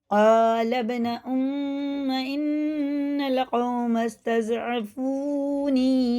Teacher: یہ با میں قلقلہ ہے، الف نہیں پڑھا جائے گا، لام سیدھا با میں لگے گا